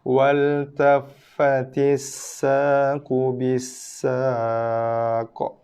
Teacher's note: Qalqalah kita wakafkan pada huruf las, qaf, Bila kita wakaf pada qaf, qaf dibaca dengan baris mati. Bila qaf berbaris mati, datang padanya sifat lantunan, sifat qalqalah.